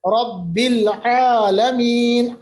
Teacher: عین کا مخرج وسط حلق ہے